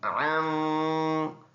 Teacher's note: یہاں پر ناک میں آواز جائے گی